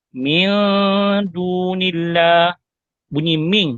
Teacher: Dah tak dengar dah bunyi nun mati, yang kita dengar ialah dengung · Min tu bunyi nun. Tapi kalau bunyi ming, dia dah pergi kepada bunyi dengung dan dia pergi kepada huruf dal yang selepas daripadanya. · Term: ikhfa